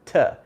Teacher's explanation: my tongue is right up against my teeth, touching the front palate, t. It's the t sound, okay?